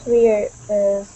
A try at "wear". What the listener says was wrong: Now this word here is pronounced wear instead of weir. It's wear. Only an air sound. Wear. Wear.